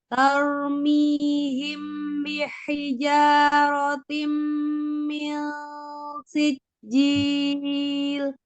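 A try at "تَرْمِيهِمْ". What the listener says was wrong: Ya, taknya tidak tebal ya. Ya, kenapa kadang kita taknya itu suka mengikut roknya tebal, gitu kan? Karena kita alirkan taknya. Harusnya tak itu sifatnya adalah siddah.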